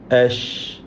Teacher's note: അഷ് തഫസ്സിയാണ് ഷീനിന് വരിക. അഷ് എന്ന് വ്യക്തമാക്കി ഷീൻ ഉച്ചരിക്കുക.